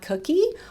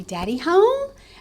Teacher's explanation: you're going to hear that prosody rise, that intonation go up